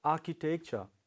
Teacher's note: stress falls on the first syllable